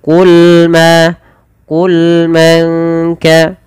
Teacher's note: sempurnakan pada lafal lam yaitu sifat bainiyahnya, yaitu di antara tidak terlalu mengalirkan suaranya, ini tidak termenahan.